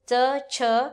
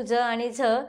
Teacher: च छ हे कठोर व्यंजन आहेत परंतु ज आणि झ हे मृदू व्यंजन आहेत